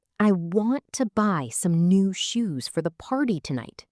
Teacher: Notice how to, some, and for are reduced. That's natural American rhythm. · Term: sentence stress